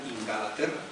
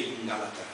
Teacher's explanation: Se titula Crónicas de Inglaterra como un homenaje a mi madre, porque mi madre no sabe pronunciar Inglaterra y pronuncia Inglaterra, con epéntesis, ¿no?, con la añadidura de una vocal para romper un grupo consonántico que genera una gran tensión articulatoria, y por lo tanto en lugar de decir Inglaterra, dice Inglaterra.